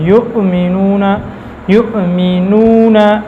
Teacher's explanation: حمزہ کے اندر یہ جہر شدت ہے، سختی ہوگی آواز، اور آواز بند ہوگی، آواز کے اندر سختی.